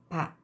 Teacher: 두 입술을 붙였다가 붙여서 공기를 폐쇄했다가 빵하고 터뜨리면서 나죠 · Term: 파열음